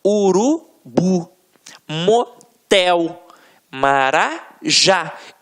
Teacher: Reparem que na hora da pronúncia, de forma mais aguçada, você vai perceber que realmente a pronúncia da última sílaba ficará mais forte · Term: oxítonas